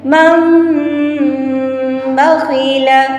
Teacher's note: نون ساکن اور تنوین کی آواز کو میم سے بدل کر غنہ اور اخفا کے ساتھ ادا کریں گے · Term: اقلاب